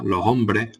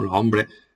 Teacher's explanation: aspiración de la S implosiva